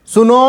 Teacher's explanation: जैसे कभी किसी को बुलाते हैं सुनो, तो जब सुनो ज़्यादा तेज़ से कह रहे हैं तो काफ़ी देर तक नो पे हम लोग स्ट्रेस देते हैं, तो वहाँ पे ये भी त्रिमात्रिक हो जाएगा।